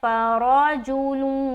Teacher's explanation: लाम को व से मिलाते हुए बिल्कुल मुंह गोल हो जाए · اب یہاں پر را کو موٹا رکھنا ہے، فرجولون، لام کو واو سے ملاتے ہو بالکل منہ گول ہو جائے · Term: غننے کے ساتھ ادغام